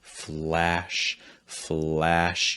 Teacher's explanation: sometimes i think the a sound could still benefit from having a higher tongue raise